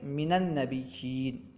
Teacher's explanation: من کے نون کو فتحہ دے کے ہم من النبیین پڑھیں گے، من نبیین نہیں بلکہ من النبیین، ٹھیک ہے؟